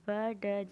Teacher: यह बोलते वक्त मेरे जो वोकल कोड्स है उनमें वाइब्रेशन जो होती है क्रिएट होती है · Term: वॉइस साउंड्स, वॉइस साउंड